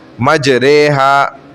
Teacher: امالہ کے معنی ہے جھکانا، یعنی الف کو یا کی طرف جھکانا، الف یا کی طرف جھک جائے گی